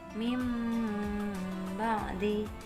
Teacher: suara nun mati atau tanwin diganti mim disertai dengan dengung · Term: iklab